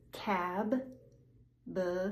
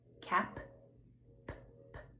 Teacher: Cab, b, voiced. Cap, p p, just air, no voice.